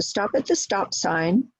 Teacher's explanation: Each word gets stress because they are both, stop and sign are both one syllables. Stop gets a little bit more stress than sign because it's describing the type of sign. It's not the yield sign, it's not the go sign, it's the stop sign.